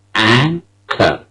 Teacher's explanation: An is a first syllable and it is stressed. K is a second syllable. The final R in the word is not pronounced. The first syllable, which is stressed, is an.